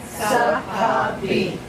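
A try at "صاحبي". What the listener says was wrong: A little faster is sahabi.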